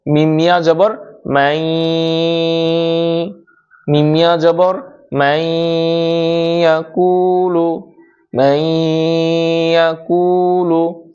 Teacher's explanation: মিমটা ইয়ার সাথে মিলাইয়া গুণনা দিয়ে পড়তে হবে।